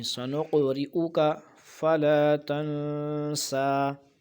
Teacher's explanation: سنق قاف پہ قلقلہ ہونا چاہیے